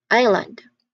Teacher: This one's a bit sneaky because in just in the second that second letter, that s is just completely silent. That hiss there, it's completely silent.